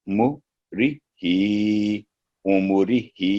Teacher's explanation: तो ही के अलावा कोई साउंड लंबा ना हो, बाकी सब 1 सेकंड। तो ही के नीचे खड़ी है सिर्फ, उसकी आवाज 2 सेकंड की होगी। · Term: कसरा इशबाइया